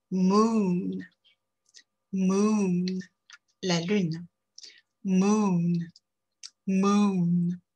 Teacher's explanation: On va bien arrondir les lèvres sont rapprochées, assez tendues. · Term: une voyelle longue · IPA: [muːn]